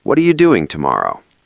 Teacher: The stress hits doing hard and then it drops. · in New York, if I ask a friend that, it's much flatter, maybe even falling at the end to show seriousness or directness.